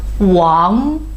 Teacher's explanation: the 'g' you still need to pronounce by use your nose so wang the voice is pretty back wang like this okay 王之涣 good next one 白日依山尽 it's already